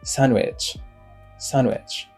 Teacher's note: le D n'est pas prononcé